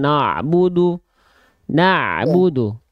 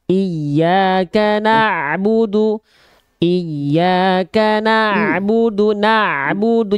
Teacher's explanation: Nunnya tipis, ain sukunnya tipis.